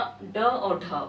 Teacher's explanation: उत्क्षिप्त या द्विगुण व्यंजन उसे बोलते हैं जब जीभ आपका ऊपर जाता है और झटके से नीचे आता है